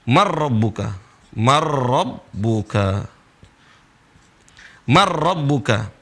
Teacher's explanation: Gak boleh dibaca man, tapi dibaca marrabbuka. Seolah-olah nun gak ada. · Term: Nunnya lebur